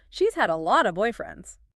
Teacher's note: This entire group just shows how consistently the word of dissolves into that single fleeting schwa sound, purely to minimize the movement of the mouth while communicating quantity.